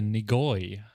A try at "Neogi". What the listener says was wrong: No, Neogi. Neogi. You put the O in the wrong spot.